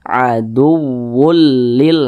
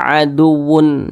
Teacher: Jadi cara membacanya dimasukkan dan juga tidak berdengung. · huruf tanwin ini langsung dimasukkan ke huruf lam. Jadi dibaca aduwwul lil. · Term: idgham bila gunnah